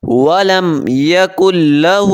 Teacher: وَلَمْ يَكُنْ لَهُ لام کو موٹا نہیں کریں گے